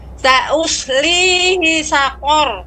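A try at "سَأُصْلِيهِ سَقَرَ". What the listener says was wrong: Nah, hi-nya pendek ya. Sa'uslihi saqor.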